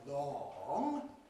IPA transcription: lɒŋ